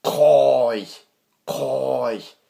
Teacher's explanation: first tone that we see is high, even sort of tone. So, for example, the word that we have written here is koi, koi, and it means your uncle or your aunt.